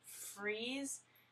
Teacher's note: for freeze we want to make sure that your vocal cords are vibrating and that your tongue is hitting that Ridge behind your mouth